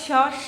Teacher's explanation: होता है वो होता है हमारा मुर्धा इसका उच्चारण करते समम हवा फेफड़ों से निकलकर मुर्धा के पास टकराती है और सीधा बाहर निकलती है